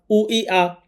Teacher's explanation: হামজা হলকের শুরু থেকে শক্ত করে পড়তে হয়।